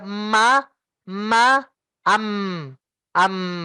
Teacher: Nah, itu yang membedakan ma dengan ba ya. Ma itu ada anginnya yang keluar, tapi lewat hidung keluarnya. Kalau ba enggak, ba itu kita tolak.